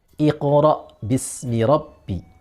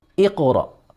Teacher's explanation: bacaan qalqalah ini panjangnya setengah harokat. Jangan sampai satu harokat, karena ketika satu harokat itu akan menjadi sama seperti diharokatkan.